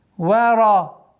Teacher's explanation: Вау, мягкий звук. Ра здесь твердый.